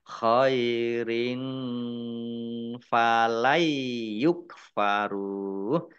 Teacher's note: Nun sukun bertemu dengan huruf ya, bacaan idgham bi gunnah. Masuk dengan mendengung, yaitu mendengung ya.